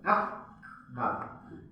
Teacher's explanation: Sifatnya hamas huruf kaf. Tapi jangan lupa juga selain hamas huruf kaf itu syiddah, kuat. Jadi harus kita tekan dulu. Yak. Nah, baru ada hamasnya.